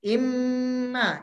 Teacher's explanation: Yang paling sempurna, sederhananya, itu bunyi nun atau bunyi mimnya itu kedengaran ditasdidkan.